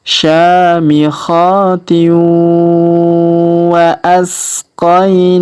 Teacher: Syamikhati, kemudian tanwin in, huruf tin bertemu dengan waw bertasdid, maka tanwin innya melebur masuk ke huruf waw bertasdid. Kita tahan dan kita tekan ya.